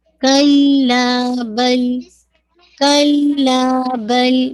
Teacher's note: سکتہ کرنا ہے، یعنی بریتھ لیس پاز، یعنی اگر آپ پاز دیں گے لیکن وہ اس میں سانس نہیں لینی ہے